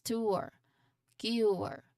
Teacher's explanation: a gliding vowel that starts with a short ooh sound, has an ooh like in good and glides towards the schwa sound. So your lips start slightly round and then relax. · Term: dip thong